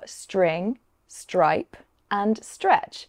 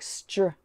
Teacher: when these consonants are together, that t sound can sound a bit like a ch sound. So together it sounds like str. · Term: str sound